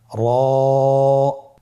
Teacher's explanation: র আবার বলুন র এর মাখরাজ কোন জায়গা থেকে স্ক্রিনে দেখুন জিহ্বার আগার উল্টা পিঠ তার বরাবর উপরে তালের সঙ্গে লাগিয়ে উচ্চারিত হয় · র হরফটি এখানে আমরা পর উচ্চারণ করব। মোটা করে উচ্চারণ করব। এবং র হরফটি এক আলিফ টেনে পড়ব।